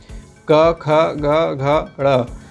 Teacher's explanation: जो कवर्ग है वह कंठ से उच्चारण होने वाला वर्ण है